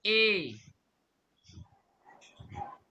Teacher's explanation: এ বলার সময় আপনাদের জিহবা কিন্তু সামনের দিকে আছে।